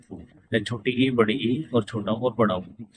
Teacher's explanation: जिन स्वरों के उच्चारण में मुंह सबसे कम खुलता है इन्हें संवरत स्वर कहते हैं